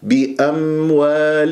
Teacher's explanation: طيب هذه الميم ليست من حروف قطب وجدل قلقلة، هي من حروف البينية لنعمر، فلازم تعطيها جريان للصوت فترة زمنية بسيطة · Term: الميم الساكنة